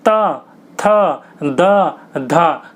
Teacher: वहीं पर ही त थ द ध, बोल के देखिए आपकी जीभ जो होगी वो दांत पर टकराएगी। दांत पर बिना टकराए आप बोल नहीं सकते इनको, इसलिए इनको दंते कहा जाता है।